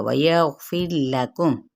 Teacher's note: را ساکن ما قبل کسرہ یعنی زیر ہے تو را باریک پڑا جائے گا